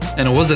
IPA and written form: æ nɪt wə zə (and it was a)